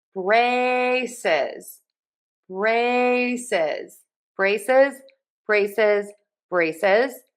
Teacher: So, two syllables, stressed syllable number one. · Stress syllable one, brae, and don't forget the Z in syllable number two. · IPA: /ˈbreɪ.sɪz/